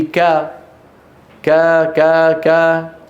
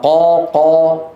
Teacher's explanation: لاحظوا صوت القاف، كيف أن الصوت يتصعد وأقصى اللسان مرتفع، والحلق هنا فيه تضيق.